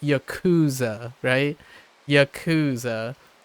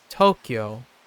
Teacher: you're always attacking the first syllable as opposed to English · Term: first syllable emphasis